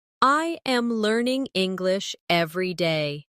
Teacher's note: When you shadow, make sure you're not reading from a script, but really listening to the sound. Notice how my voice rises slightly on learning and falls at the end on day.